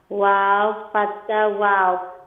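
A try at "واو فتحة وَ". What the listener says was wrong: Wow, fatha, wa. Not wow, fatha, wa.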